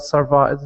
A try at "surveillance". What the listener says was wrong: it's pronounced surveillance surveillance not Sur survilance because that sounds like this like the word violence